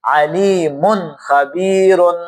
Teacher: خا حروف حلقی میں سے ہے، لہٰذا وہ ناک میں آواز لے کے جانے کو منع کرتے ہیں